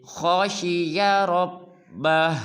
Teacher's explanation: خا کو بھی پر ادا کریں گے اور رب کی را کو بھی، اور آخر میں ہا کو خوب ظاہر کریں گے